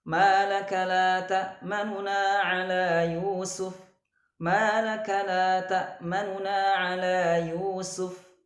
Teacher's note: Raum pada surah Yusuf ayat 11 ini itu dengan merendahkan suara ya dengan cepat ya pada huruf nun yang pertama ya dengan mengidharkan atau menjelaskan kedua nun tersebut.